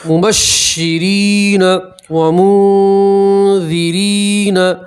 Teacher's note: یا مدہ ہے اس لیے الف کے برابر کھینچیں گے